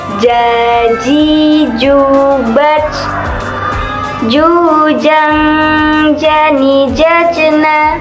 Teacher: dilafalkan dengan menyentuhkan Tengah lidah ke daerah langit-langit